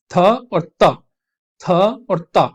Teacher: इसी तरीके से ये जो थ और त, थ और त जो होती हैं ये कहलाती हैं आपकी डेंटल, थ और त, थ और त, आप देखेंगे कि आपकी जो टिप ऑफ द टंग है वो आपके अपर टीथ को टच करके आवाज निकलती है।